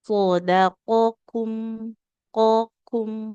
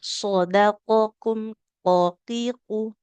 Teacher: Kalau huruf qaf itu kan dia pangkal lidahnya menempelnya ke langit-langit yang bagian yang lunak, jadi lebih dalam.